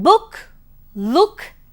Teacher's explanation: You have U as in book, look, etc., which is present in the centralized back portion just above the half closed position of the tongue.